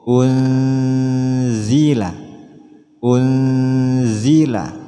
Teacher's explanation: ada nun mati bertemu Za caranya masukkan suara nun mati pada ZA disertai dengung unzila unzila ketika nun mati ini dilafazkan langsung siap-siap untuk melafazkan · Contoh berikutnya di sini ada unzila, ada nun mati bertemu za. Caranya masukkan suara nun mati pada za disertai dengung.